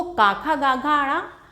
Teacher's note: ये कंठ से, गले से इनका उच्चारण किया जाता है, इसीलिए इनको कहा गया है ये इनका उच्चारण स्थान।